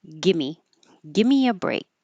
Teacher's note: so you don't have to say a v that makes it easier · you won't hear the final K because the tongue's going to the K position but not making a c at the end